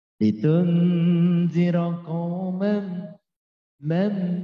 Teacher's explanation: Tanwin bertemu mim, idgham bi gunnah. Jadi melebur harokat tanwin kepada huruf mim disertai dengung. kurangnya 2 harokat.